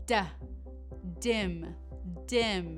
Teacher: D is very similar to T as your teeth are together the tongue moves behind your teeth however it's higher up in your mouth